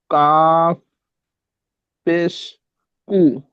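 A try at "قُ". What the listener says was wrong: কাপ হয় না, দুটো নোক্তাওয়ালা অক্ষরটি মুখ গোল করে পড়তে হয়। কপ পেশ কু, মুখ গোল করে, পুর অক্ষর কপ পেশ কু।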